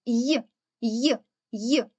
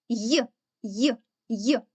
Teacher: й повторіть його й й простежте за його вимовою й й під час вимовляння звука й розтягується губи і видихуване повітря натрапляє на перешкоди Отже цей звук є приголосним але він дітки завжди м'який звук є ніколи не буває твердим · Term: звук й